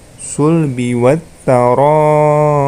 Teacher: Huruf ra-nya dibaca panjang, boleh 4 harokat, boleh juga 5 harokat, ya.